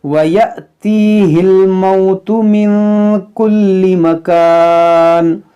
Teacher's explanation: یہاں پر دیکھیں جو الف کے اوپر جزم ہے یہ حمزہ ساکنہ ہے، تو اس کو جھٹکا دے کر پڑھیں گے. یہاں پر یا ساکن سے پہلے زیر ہے، یا مدہ ہے، تو کھینچیں گے